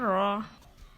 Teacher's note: را پر زبر ہے، نہیں کھینچیں گے اور را کو موٹا پڑھیں گے